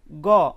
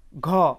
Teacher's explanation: তারপর গ, বাতাস স্বাভাবিক। ঘ, বাতাস জোরে বের হচ্ছে।